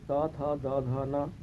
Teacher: बोलते समय जीभ दांतों से सटती है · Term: त वर्ग